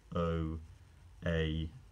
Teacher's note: your tongue moves the vowel changes in articulation while you're saying it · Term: diphthong